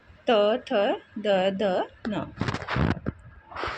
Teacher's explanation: जीभ के ऊपरी दांतों को स्पर्श करने पर इनका उच्चारण होता है। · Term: दंत्य